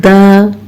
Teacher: दाल ज़बर दा, दाल बारीक हर्फ है, आवाज़ मुंह से बाहर निकालें।